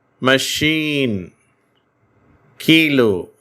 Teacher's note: மூன்றாவது உச்சரிப்பு என்ன என்று சொன்னால் ஈ என்ற உச்சரிப்பு ஐ என்ற எழுத்து சில வார்த்தைகளில் நெடில் ஓசையோடு ஈ என்ற ஓசையோடு உச்சரிக்கப்படுகிறது